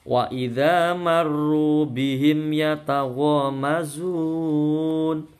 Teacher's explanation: bihim bacaan idhar syafawi enggak boleh dengung.